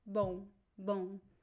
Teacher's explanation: the air goes through your nose and mouth at the same time so this sound goes really nasal boom boom but you should not touch your lips and pronounce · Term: nasal sound